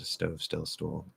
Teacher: When T is preceded by S, it's not aspirated.